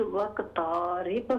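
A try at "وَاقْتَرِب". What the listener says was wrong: वक़्तारिब, ता को लंबा कर रहे हैं आप, वक़्तारिब, वक़्तारिब, वक़्तारिब, हाँ ज़बर को लंबा न कीजिए, वक़्तारिब।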